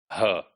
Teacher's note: the last sound, which is fricative in English, it is h, glottal sound. And this is voiceless. It's the only sound in English which is voiceless and it does not have any voiced counterpart.